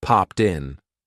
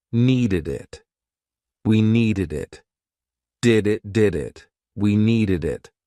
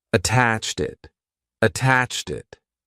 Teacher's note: a lot of times we're going to connect that T to the vowel sound